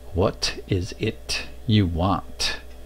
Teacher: There's a tendency to swallow that ending T. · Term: Glottalize it